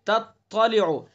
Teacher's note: تا اور تا کا مخرج بھی زبان کی نوک اور ثنا علیہ کی جڑ